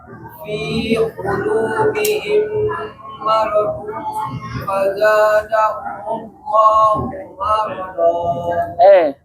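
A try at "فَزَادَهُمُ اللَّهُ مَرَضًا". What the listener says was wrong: Tebal. Bukan marado, tapi maradu. Za ujung lidah. Za.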